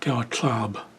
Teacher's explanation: But looking at the way it's spelled, I would probably think that Gyuatlab would be the proper way to say it. This P is a little bit softer. It sounds almost like a B. It makes kind of a B sound.